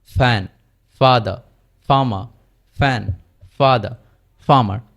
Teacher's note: আর এফ এর সময় দাঁত এবং নিচের ঠোঁট থেকে উচ্চারিত হবে, কিন্তু কম্পিত হবে না